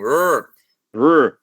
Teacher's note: a letra R em começo de palavra não vai ter esse som de, ok? Ele vai ter um R retroflexo